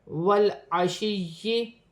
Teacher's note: या मुशद्दद है, जमाओं के साथ अदा किया जाएगा। या साकिन से पहले ज़ेर है, या मद्दा बन रही है, एक अलिफ की मकदार खींच कर पढ़ा जाएगा।